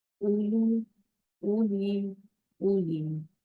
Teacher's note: जमा में हमजा के बाद जो वाव मिल रही है वो तलफ्फुज में नहीं आएगी, यानी हम पढ़ने में उसको नहीं पढ़ेंगे। ये सिर्फ लिखी जाती है रस्म खत में।